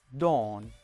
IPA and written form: dɔːn (dawn)